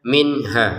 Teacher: Untuk nun bertemu ha kita baca dengan jelas ya. Jangan sampai dengung.